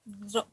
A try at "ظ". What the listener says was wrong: Vo. Itu masih vokal O itu. Belakang lidah belum naik. Vo. Vo. Vo. Iya, pangkal lidahnya naik sama tengah lidahnya naik. Ya, kemudian lepas, Bu. Lepas. Jangan sampai ada penahanan.